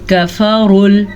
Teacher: را کو پر پڑھیں گے، را کے اوپر پیش ہے